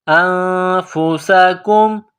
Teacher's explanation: حروف اخفا ہے تو آواز ناک میں پیدا کرنا ہے، انفسکم، سین میں سیٹی کی آواز